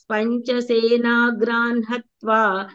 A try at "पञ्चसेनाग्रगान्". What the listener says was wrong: सेनाग्रान् इति नास्ति, सेनाग्रगान् इति अस्ति।